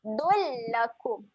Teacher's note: Tanwin tak selari berjumpa dengan huruf lam. Jadi kita akan masuk terus pada bunyi huruf lam tanpa dengung. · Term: bacaan asimilasi